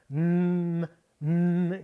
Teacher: you form that sound by putting your tongue against the back of your teeth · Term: N sound